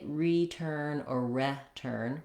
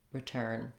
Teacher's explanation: stressed, we don't say return or return, rather return. So typically letter E is going to say the unstressed, reduced I sound